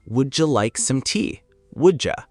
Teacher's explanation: The D and the Y blend together and become a J sound.